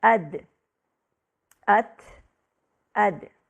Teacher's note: ان تینوں حروف میں آواز بند ہو جاتی ہے، جو کہ تا میں ہوا کے ساتھ، جبکہ دال اور طا میں قلقلہ کے ساتھ سنائی دیتی ہے۔ ان تینوں کو مجموعی طور پر حروف النطعیہ کہا جاتا ہے، کیونکہ یہ اوپر کے تالو کے اگلے حصے سے ادا ہوتے ہیں، جس کو نطع الفم کہا جاتا ہے۔